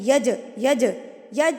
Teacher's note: جیم کے اوپر جب یہ جزم آ جاتی ہے تو اس کو ہلا کے پڑھتے ہیں، یج، یج، یج نہیں پڑھنا ہے، اس کو چے کی ساؤنڈ نہیں دینی. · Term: قلقلہ